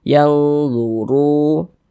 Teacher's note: Nah, tanda baca dhammah. Maka huruf ra dibaca tabkhim, dibaca tebal, tebalkan huruf ra-nya. Luru. Kemudian ru dibaca panjang.